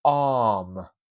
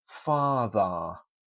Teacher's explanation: the sound is softened to almost an a for example arm it's an elongated a sound the R's gone